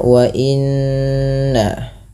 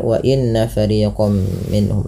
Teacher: tahan bunyi suara nun yang berharakat tasydid karena ia dikategorikan bacaan gunnah